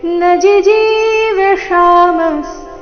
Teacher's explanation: ನ ನಂತರ ರಸ್ವಜಿ ಅದರ ನಂತರ ದೀರ್ಘಜಿ ಇದೆ